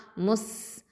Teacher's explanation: ஹம்ஸ் சிஃபத்தை கொடுக்கணும். ரஹாவா டைமிங்கும் கொடுக்கணும்